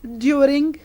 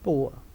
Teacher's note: The second sound in this category is oor. Glide begins with the tongue position similar to that of oo and moves in the direction of a. Lips are rounded in the beginning and spread at the end.